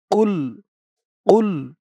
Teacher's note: কফের আওয়াজটা গলার ভেতর থেকে ধাক্কা খেয়ে আসবে